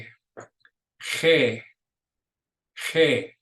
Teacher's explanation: the G is a guttural sound. It really starts in your throat. So you're going to get some throat sound of that to make it right.